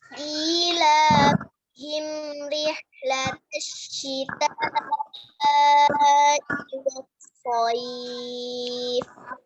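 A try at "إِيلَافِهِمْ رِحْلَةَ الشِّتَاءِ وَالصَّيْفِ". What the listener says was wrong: Baik, jayid ya.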